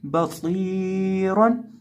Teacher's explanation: सौद को एक अलिफ के बराबर खींच के पढ़ेंगे, लंबा करके पढ़ेंगे, क्योंकि सौद के साथ याई मद्दा है